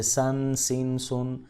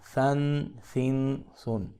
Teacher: اس کو ہم نے سیٹی کی آواز سے نہیں پڑھنا، جیسے سن، سن، سن، سافٹ ایس کے ساتھ ہم نے اس کو پڑھنا ہے۔